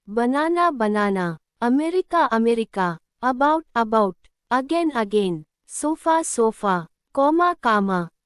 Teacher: we don't pronounce it strongly. It becomes a soft A, very light and quick. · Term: schwa sound